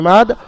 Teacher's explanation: ইমাদি থেকে দালকে সাকিন করে পড়ছেন ইমাদ, আর 3 থেকে 4 আলিফ পরিমাণ টান দিয়ে পড়বেন, কারণ মাদ্দে আরিজ ওয়াকফির কায়দা ব্যবহার হয়েছে হরফে মাদ্দার পরে দালের উপরে থামার জন্য।